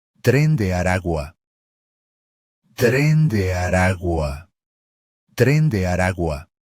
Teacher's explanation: The letter G in the final word is pronounced very softly, as it sits between two vowels.